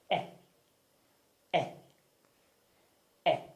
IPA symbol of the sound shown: e